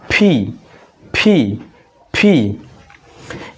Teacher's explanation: দুইটা ঠোর হচ্ছে একত্রিত করব বাতাসটা সামনের দিকে নিক্ষেপ করব